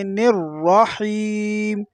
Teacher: دوسرے را کو بھی پر پڑھنا ہے اور ہا کو باریک پڑھنا ہے